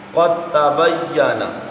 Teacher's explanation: قاف متحرک ہے، آگے تا پر تشدید آ گئی، درمیان میں ساکن کو چھوڑا اور متحرک کو سیدھے تا سے تشدید والے سے ملا دیا۔